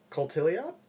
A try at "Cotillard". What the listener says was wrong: I have no idea, but Cotillard. I'm pretty sure the T would be silent, like Colliard or something. I don't think it's Cotillard. Cotillard just sounds bad. I don't think that's right either, but I think both of us got it wrong.